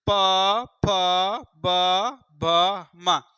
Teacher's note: आप देख रहे हैं कि जो ओष्ठ है, ऊपर नीचे का ओष्ठ दोनों चिपक जा रहा है, बोलते समय दोनों स्पर्श कर रहा है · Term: ओष्ठ व्यंजन